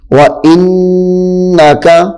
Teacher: نون مشدد ہے، غنہ کریں گے